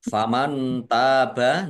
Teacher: nun sukun bertemu dengan huruf ta, bacaan ikhfa dibaca samar-samar